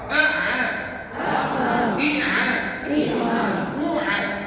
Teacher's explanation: Tuan-tuan pastikan bunyi ain tengah-tengah kerongkong